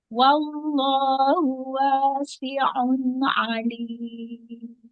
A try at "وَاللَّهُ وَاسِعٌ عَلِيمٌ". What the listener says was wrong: Ya, fathahnya jangan ismam. Wallahu, iya.